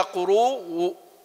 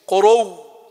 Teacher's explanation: قروء يعني المفروض أنها تحولت إلى قروء، الواو الهمزة هذه تحولت إلى واو ثم أدغمت في الواو